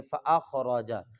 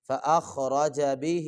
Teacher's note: خا کو موٹا کریں گے اور را کو بھی موٹا کر کے پڑھیں گے